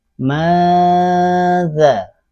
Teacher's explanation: nun tidak diucapkan dengan jelas, melainkan lidah menjauh sedikit dari langit-langit atas saat membacanya. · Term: hakiki